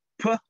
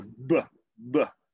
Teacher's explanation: P, and then we turn on our voice for a B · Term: partner sounds